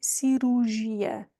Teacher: Words like this, it's even tough for us. So we just skip that second R and just say cirurgia, because we're going to say it quickly.